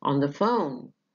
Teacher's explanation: يبقى إذن كلمة phone is my contrastive stress.